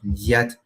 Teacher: the long version of the palatalized form of the la sound